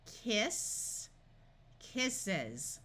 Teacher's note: Notice the double S has the unvoiced S sound, but the S in the suffix has the buzzing voice sound of Z.